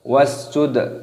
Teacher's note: dalnya di qalqalah, dipantulkan suaranya